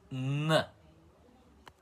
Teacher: Então, como vocês já sabem, eh, o som, o som básico de consoante da letra Nfabeto é assim, N com a língua articulada para cima, com o céu da boca e encostando nos dentes como consoante nasal. assim, n.